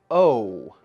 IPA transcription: əʊ